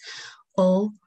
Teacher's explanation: o which is a half closed back rounded vowel it occurs in all the three positions in a word that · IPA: /o/